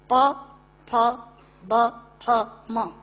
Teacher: दोनों होंठ मिलाकर बोले जा सकते हैं। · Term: ओष्ठांग